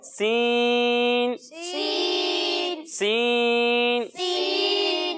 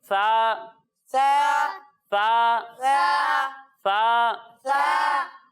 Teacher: जब हम सा की अदायगी करेंगे तो इसे बारीक भी पढ़ेंगे और इसमें सीटी की आवाज भी नहीं आएगी